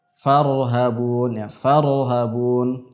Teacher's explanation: huruf ra sifatnya adalah al-bainiyah, sehingga membuat suara, ya, tidak terlalu banyak mengalir tapi tidak juga terlalu banyak tertahan. Sehingga misalkan ketika dia sukun farhabun, ya, farhabun, tidak kemudian terlalu lama kita alirkan farhabun, nah, ini kurang tepat, ya, karena sifatnya adalah al-bainiyah.